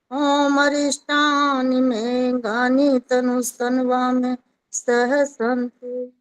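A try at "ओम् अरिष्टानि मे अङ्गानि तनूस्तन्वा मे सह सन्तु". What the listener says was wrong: ये अरिष्टानी में श कैसे बोल दिया इस बार? अब मैं कह रहा हूँ इसमें श कैसे बोल दिया? बाकी जगह तो स बोला है, हर जगह श को।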